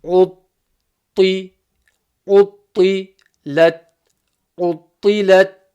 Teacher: Notice the emphasis on the ta. It's full mouth letter and it's got a shadda as well. It should come with plenty of emphasis.